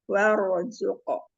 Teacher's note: Jadi wawunya jangan dibaca tebal sayang. Wanya tipis saja.